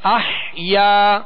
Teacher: اسے ایک الف یعنی 2 حرکت کے برابر کھینچ کر ادا کریں گے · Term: الف مدہ